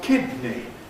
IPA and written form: ˈkɪdni (kidney)